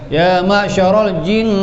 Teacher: dengungnya mesti ke hidung ni, dua harakat. Jin, satu, dua mula. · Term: wajibul gunnah